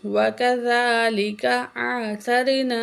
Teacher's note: یہاں ذال کو نرمی سے پڑھیں گے، 1 الف کے برابر کھینچ کے پڑھیں گے